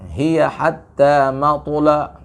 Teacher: sesudah huruf to, hindarkan huruf lam ikut sifat huruf to. Yaitu lam harus terbaca dengan tipis, ya, karena lam sifatnya istifal.